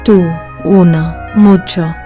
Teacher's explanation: In Spanish, it is always U, like in food. Pure, no W sound after it.